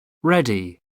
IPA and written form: ˈrɛdi (ready)